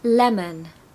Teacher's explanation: here we've got the stress on the first part